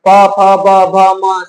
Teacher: प का उच्चारण स्थान बताना है। प, फ, ब, भ, म सब कहां आता है? होठ में।